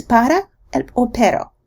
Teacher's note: Flapping is essentially a very short production of an alveolar or dental stop without turning off the vocal cords. The sound remains voiced and is so short as not to allow a sufficient air buildup behind it to create a pop.